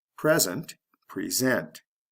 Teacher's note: did you hear the sound change from a short e to a long e